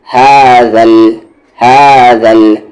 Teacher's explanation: اس ہا کا مخرج باٹم تھروٹ, سب سے نیچے والا حلق, یعنی جو سینے کے پاس ہے, اور دال کا مخرج زبان کا کارنر اور آپ کے سامنے والی 2 دانت کا کارنر, ہاذل.